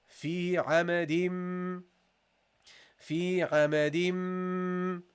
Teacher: So we don't pronounce the non-vowel noon. And we go immediately from the vowel of the letter to the meme. So you say here, hama, di, dim. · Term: we drop the noon